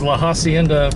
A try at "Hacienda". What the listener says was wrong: Hacienda, the H is silent. The H is silent. You do not pronounce the H.